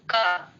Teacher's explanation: का बोलने से पहले जिह्वा हमारी कंठ के पास गई, वहां सटी तब आवाज निकली ना, तो बोलने से पहले सा प्रयास हुआ।